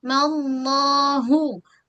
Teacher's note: So tak nak hilang bunyi. Ha bulat tu mesti sebut dengan keadaan jelas dari pangkal kerongkong